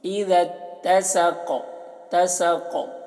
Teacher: والقمر اذا اتسق، والقمر قاف کو موٹا پڑھنا ہے، ول یہ الف کو نہیں پڑھا جائے گا، واو کو لام سے ملا کر، والقمر را کو باریک، والقمر اذا، اذا ذال تا کے ساتھ مل رہا ہے اور یہ دونوں الف کو نہیں پڑھا جا رہا، اذا اتسق، اذا اتسق، قاف کو پر پڑھتے ہیں اور قلقلہ کرتے ہیں، قاف میں آواز ٹکراتی ہے، ڈبل آواز نکلتی ہے اس کی